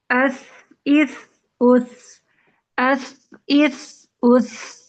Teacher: ایک تو اس میں سانس جاری رہے گی، دوسری آواز بھی جاری رہے گی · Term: ہمس